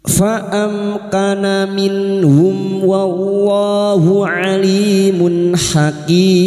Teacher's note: mim sukun bertemu waw idhar syafawi, mim sukun dibaca jelas tanpa mendengung